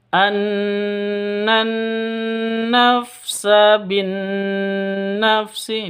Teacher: Idgham Syamsiah namanya terus Nun tasydidnya dibaca dengan ghunnah musyaddadah